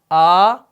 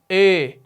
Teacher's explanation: یہ پہلی آواز کیا ہے، آ، اور یہ کیا ہے، ای، اور بیچ والی اے۔ تو یہ اے آواز آگی نا، نہ یہ آ ہے نہ یہ ای ہے، تو یہ ایک مختلف آواز آگی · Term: فرعی